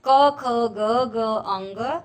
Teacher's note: कंठ्य वर्ण, जिसका उच्चारण कंठ से किया जाता है, उसे कंठ्य वर्ण कहते हैं।